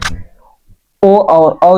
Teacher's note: ओ और औ जो होते हैं ये जीहवा के पश्च भाग से बोले जाते हैं।